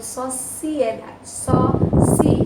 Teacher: Outro hiato, porque o si se separa do E, né? O I e o E se separam, cada um é uma vogal, cada um fica na sua sílaba diferente. Por isso, hiato.